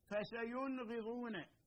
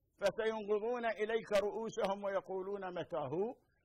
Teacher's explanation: النون الساكنة في كلمة فسينغضون حكمها الإظهار السبب لمجيء الغين بعدها